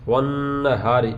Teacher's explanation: یہ ہا کو سینے کی طرف سے ادا کریں گے